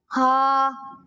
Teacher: ہا کی ادائیگی حلق کے نچلے حصے سے ہوگی